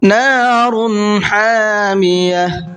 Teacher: را کو پر کر کے پڑھیں گے اور ہا کو حلق سے نکال کر کے پڑھیں گے